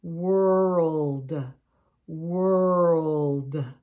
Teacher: the world has that L in it and we almost make it sound like three syllables world world but we run it together so it's world not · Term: L sound